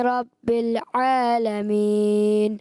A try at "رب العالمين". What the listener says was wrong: رب العالمین، رب العالمین. عین کی ادائیگی کلیئر کریں.